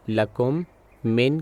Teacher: دونوں میم آپس میں ضم ہو جائیں گے اور آواز مکمل طور پر ہونٹوں کو ملا کر ناک کے ذریعے بنے گی اور 2 گنتی کے برابر کیا جائے گا غنہ۔ · مثال کے طور پر اس آیت میں ہم ایک میم ساکن دیکھتے ہیں اور اس کے بعد دوسرا میم، لہٰذا اگر میں ان دونوں الفاظ کو پڑھنے جا رہا ہوں تو اسے لکم من کے طور پر پڑھا جائے گا۔ میں نے اپنے ہونٹ ملائے، کی آواز ناک کے راستے آئی اور اسے 2 گنتی کے برابر ادا کیا۔ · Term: ادغام